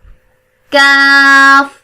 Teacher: दोनों में जुबान की जड़ जब मोटा काफ पढ़ेंगे तो तालू के नरम हिस्से पे लगेगी, और जब बारीक काफ पढ़ेंगे तो जुबान की जड़ तालू के सख्त हिस्से को लगेगी, फिर काफ अदा होगा. Pronounced from the root of the tongue, touching the hard part of the palate, top of the mouth.